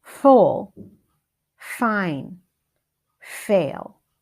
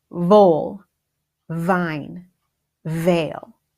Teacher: the F sound is teeth lower lip air